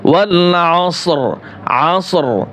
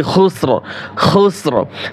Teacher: তো ওয়াকফ অবস্থায় যদি রর উপরে সাকিন হয় তাহলে কি হবে? র মোটা হবে।